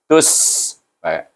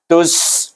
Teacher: Ta, suku kata ta bunyinya tu pasal di baris depan, tetapi dia gabung dengan sin yang mati bunyinya tus. Ada hamas, ada safir bunyi sin.